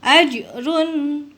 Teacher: ini dibaca Run bukan rung ya karena disebut dengan Idhar